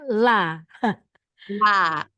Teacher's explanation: sisi lidah tengah sampai depan ketemu langit-langit. sisi lidah tengah sampai ke depan ketemu langit-langit itu la.